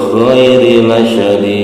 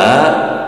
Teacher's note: Juga ada hukum bacaan tajwidnya itu qalqalah kubro, karena di ujung kalimat ya, pantulannya besar